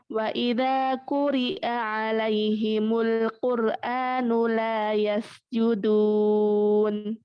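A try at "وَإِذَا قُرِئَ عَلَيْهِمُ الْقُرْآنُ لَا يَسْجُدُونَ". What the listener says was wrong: Ra yang tebalkan coba. Wa idza quri'a 'alaihimul Qur'anu la yasjudun. Hamzah.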